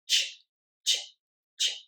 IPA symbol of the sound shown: tʃ